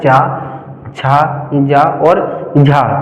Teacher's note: ऐसे वर्ण जिनको उच्चारित करने पर घर्षण उत्पन्न होता है उन्हें कहते हैं स्पर्श संघर्षी